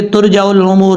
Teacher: ترجع الامور، الامور، عین کو اپنے مخرج سے ادا کریں۔ اگر آپ پڑھیں گے ترجع الامور جلدی میں تو عین کو حمزہ پڑھیں گے